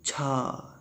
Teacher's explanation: तो अब चावर को का पहला वर्ण देख लीजिए च, और ऐसे बोले हम छा, तो और ज़्यादा हवा निकलती है। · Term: महाप्राण